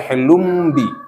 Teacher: Tanwin ketemu dengan ba menjadi bunyi mim, namanya iklab.